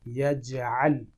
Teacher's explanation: أج أج أج أج أج أج أج أج یج یہاں پر زبر ہے اور جیم ساکن ہے، اس لیے یہاں پر جیم کے ساتھ قلقلہ کی آواز نکلے گی